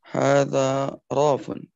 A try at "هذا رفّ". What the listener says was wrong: رف. ليس راف لكن رف مباشرة. بتشديد.